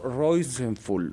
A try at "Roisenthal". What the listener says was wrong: Es Roisenthal con T al final.